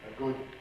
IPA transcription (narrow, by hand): ə ˈgʊd̚